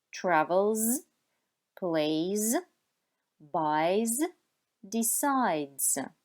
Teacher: Si el verbo acaba en un sonido sonoro como l, y, d, n, b, entonces al final escucharemos z.